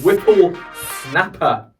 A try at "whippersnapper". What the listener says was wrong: Whippersnapper. No, you said Whipple. Whippersnapper.